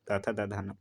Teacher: दंत ध्वनियाँ वो होती है जिनके उच्चारण में जीभ दांतों के पिछले भाग को छूती है।